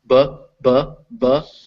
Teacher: But if you're doing B, if you touch your throat, B, B, B, you'll feel it vibrating.